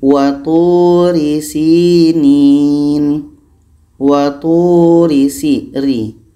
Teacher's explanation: Ra baris di bawah. Pangkal lidah kita ini tidak terangkat. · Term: tarkik